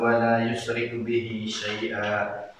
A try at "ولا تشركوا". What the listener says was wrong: ولا تشركوا not يشركوا